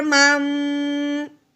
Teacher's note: نون ساکن کو نہیں پڑھا کرنا، صرف ہم نے میم ساکن کو پڑھا کرنا ہے